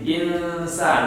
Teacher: Menyamarkan bunyi nun sukun ketemu dengan sin. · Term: ikhfa